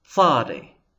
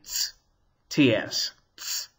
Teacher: But tzadi, you hear, it's sort of like sin and samech, tzadi, but with something extra at the beginning, sort of like a T before the S sound